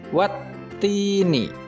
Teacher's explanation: Maka cara membacanya adalah huruf alif lam melebur dan tidak dibaca sehingga langsung masuk ke huruf ta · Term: huruf syamsiah